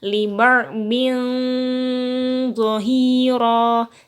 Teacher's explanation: ketika mengucapkan tanwin atau samar, langsung bibirnya mencucu membentuk huruf zo. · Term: ikhfa hakiki